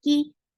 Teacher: Kaf is light letter. For kasra, give e sound. The sound should be short.